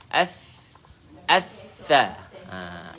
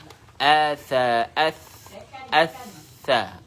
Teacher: huruf tha ialah keluar daripada hujung lidah dan hujung gigi atas